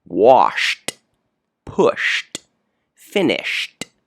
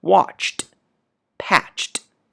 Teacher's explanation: notice these are all unvoiced sounds your vocal your vocal cords do not vibrate